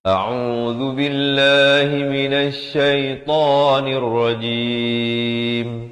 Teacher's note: Lafaz jalalah di sini dibacakan dengan nipis 2 harakat. Ta juga 2 harakat dan diakhiri juga dengan sekurang-kurang 2 harakat.